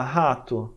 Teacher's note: vai falar rato, vai falar rei, não sai muito ar da boca, não é soprado.